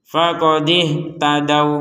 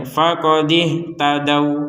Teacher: tidak ada dengung tidak ada panjang sama sekali dua harakat pun enggak ada panjang sama sekali